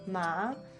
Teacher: the second tone is rising